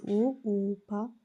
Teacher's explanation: ఓష్ట్యము అంటే పెదవి నుండి పుట్టిన వర్ణములను ఓష్ట్యములందురు